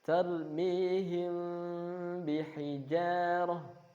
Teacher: Kebanyakan qurra tidak merapatkan bibirnya. Sedikit ada celah. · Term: ikhfa syafawi